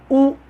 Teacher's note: तो हमारे होठ पहले सक्रिय हो रहे, गोल बन रहे, इसका मतलब है कि ऊ को बोलने के लिए होठों की आवश्यकता है, यही इसका उच्चारण स्थान है।